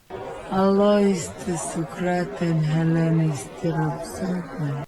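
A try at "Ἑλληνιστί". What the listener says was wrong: Pronunciation of Hellenisti is not bad here. Maybe it's a question of the second vowel and how long that is, but because it shouldn't be Hellenisti, it should be Hellenisti. But I think she's pronouncing that well.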